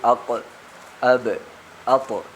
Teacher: കൽക്കലത്ത് എന്ന് പറയും അതായത് മഹ്റജിൽ മുഴക്കത്തോടുകൂടി ഉച്ചരിക്കണം